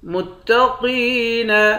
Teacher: قاف کو موٹا پڑھیں گے، قاف کو یا کے ساتھ ملا کر ایک الف کے مقدار کھینچ کر بھی پڑھیں گے